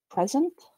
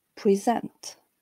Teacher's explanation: there seems to be a clearer continued fall throughout the noun starting from the peak on the first syllable in the verb there is a rise towards the stressed syllable · in the noun present we clearly have a peak of higher intensity on the first syllable whereas the peak on the second syllable in the verb present is not quite distinct probably because the first syllable contains a reduced vowel uh while